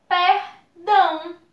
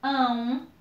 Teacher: aqui nós temos o A e o O juntinhos na mesma sílaba, ão. Então, isso é um ditongo